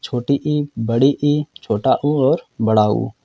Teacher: समृत का मतलब जिसमें लगभग मुंह क्या है बंद रहता है